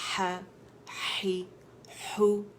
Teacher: ہی ہو تو complete rolling ہونی چاہیے لپس کی